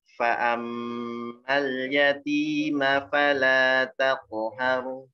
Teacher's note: Fa'ammal, ditahan dulu mimnya. Habis itu masuk ke lam. Mal ya, habis masuk ke lam, dialirkan lamnya sedikit.